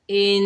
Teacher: حمزہ کو نون مشدد سے ملائیں گے، نون مشدد میں ایک الف کی مقدار غنہ کریں گے